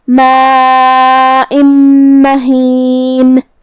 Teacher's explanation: پھر حرف المیم ہے کلمت مہین میں، تو یہاں بھی حکم ہوا ادغام بغنہ. ہم یہ تنوین کو میم میں ملا کے غنہ اور تشدید کے ساتھ یہ حکم کو ادا کریں گے